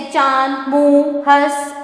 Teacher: इसका उच्चारण नाक और मुंह दोनों की सहायता से होता है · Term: अनुनासिक